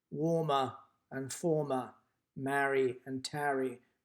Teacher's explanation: the feminine rhyme warmer and former Mary and Terry where the penultimate syllable is stressed